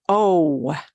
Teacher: it's kind of like long o in English but it's cut